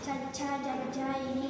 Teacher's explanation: ఇవి పలికేటప్పుడు నాలుక పైన తగులుతుంది, అందుకే ఇవి తారభ్యాలు అంటారు.